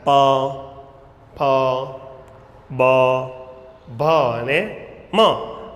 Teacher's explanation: ઓષ્ઠ્ય એટલે કે હોઠ। હોઠ એકાબીજાને અડકે છે।